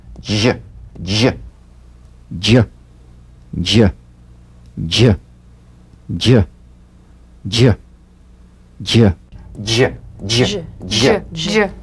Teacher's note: Use a light, quick, energetic staccato treatment and feel a voiced percussive sensation flowing from the hard palate onto the gum ridge.